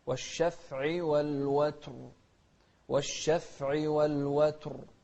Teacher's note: والوتر هني الراء أيضا مفخمة